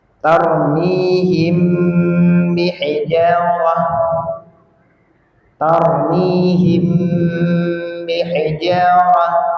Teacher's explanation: Jadi kalau mim sukun ketemu dengan w ba namanya ikhfa syafawi. Dibacanya samar kemudian ghunah.